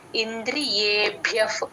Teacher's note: భ కి మహాప్రాణం య వత్తు రెండు వినపడేటట్టు చెప్పాలి ఇంద్రియే భ్యఫ్ భ్యా కి భ్యా పక్కన ఉన్న విసర్గ ఎఫ్ లాగా చెప్తామండి